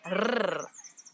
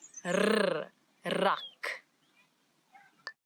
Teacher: it's the rrr, as if your tongue is jumping up and down in your mouth